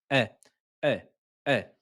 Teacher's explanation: le hamza se prononce au fond de la gorge.